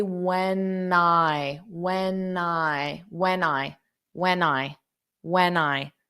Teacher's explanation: if you slow it down you would hear a n you would hear an n Sound in front of the I so repeat after me when I when I when I get